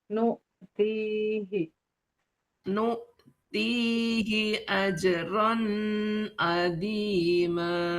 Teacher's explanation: Ti-nya panjang, hi-nya pendek.